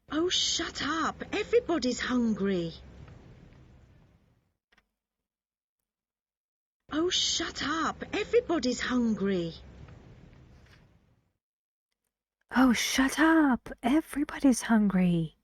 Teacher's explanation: if you want to sound angry you need to use a different kind of intonation right and that intonation is falling your voice needs to go down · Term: falling intonation